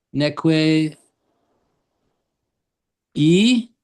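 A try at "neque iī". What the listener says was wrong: You sound both vowels, e. Short I, short I, and then long I, e.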